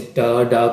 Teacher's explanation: तो अब ये देख लें कि जो टंग है एल्वियोलर रिज पर टच हो रही है